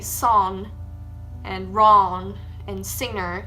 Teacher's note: I also don't pronounce the G in ing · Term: ng sound